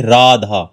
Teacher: हमने यहां पर आ को खींचा और फिर ध के बाद आ को खींच दिया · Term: प्लुत